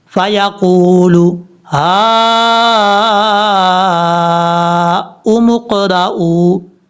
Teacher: اب یہاں پر کئی لوگ غلطی کر جاتے ہیں، وہ سمجھتے ہیں حمزہ کے نیچے واو ہے تو واو کی وجہ سے اس کو لمبا کر کے پڑھیں گے، ایسا نہیں ہے۔ حمزہ کے اوپر جو پیش ہے صرف ہم پیش پڑھیں گے، نیچے واو کی وجہ سے اس کو لمبا نہیں کریں گے